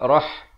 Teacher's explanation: ha pedas dibunyikan di pertengahan kerongkong